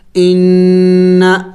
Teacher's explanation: हमज़ा नून ज़ेर इन, नून ज़बर ना, नून मुशद्दद है, गुन्ना करेंगे